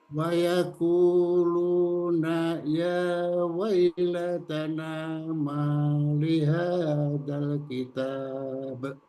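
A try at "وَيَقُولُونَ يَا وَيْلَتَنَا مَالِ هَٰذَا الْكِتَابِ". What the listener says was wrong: Hanya panjang Pak Haji. Dibaca panjang.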